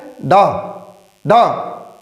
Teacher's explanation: हमारी जिव्या एक साथ ऊपर उठेगी और मूर्धा से स्पर्श करके एक साथ ही नीचे गिरेगी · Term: उत्क्षिप्त व्यंजन